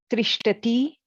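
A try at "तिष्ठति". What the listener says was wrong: No, there is no tra. It is, no, not tra. Tishtati. Tishtati.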